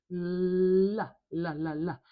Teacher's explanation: We put our tongue up behind our teeth and let the air come out on either side of our tongue while we keep our tongue nice and tall and stuck behind our top teeth in the middle only. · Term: l sound